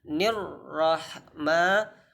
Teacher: roh itu termasuk huruf tebal maka dibuat sesuai dengan makhrojnya yaitu ditebalkan